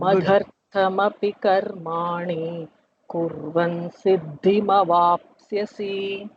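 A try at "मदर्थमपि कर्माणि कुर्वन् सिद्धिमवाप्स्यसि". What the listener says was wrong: See, no need to make it long.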